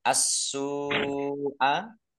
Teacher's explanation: As-su'a, alif lam samsiah karena tidak dibaca langsung masuk ke huruf berikutnya yaitu sin, ditandai sinnya ada tasdidnya, sinnya dibaca dobel. Sin doma wawu sukun mattobi'i, tetapi karena bertemu dengan huruf hamzah dalam satu kata asu'a, ini satu kata, maka menjadi mat wajib mutasib, harus dibaca panjang lima harokat.